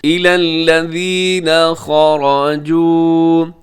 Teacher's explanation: خا موٹا ہے، را بھی موٹا پڑیے گا، اور جیم کے بعد واو مدہ ہے تو اس لیے تھوڑا سا آپ نے لمبا بھی کرنا ہے